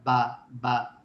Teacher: با ہونٹوں کو اندرونی گیلے حصوں کو آپس میں ملا کر ادا ہوتا ہے